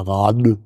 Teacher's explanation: Rad sagen mit stimmhaftem D geht nicht am Wortende denn am Wortende muss ein stimmloser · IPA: /ra:t/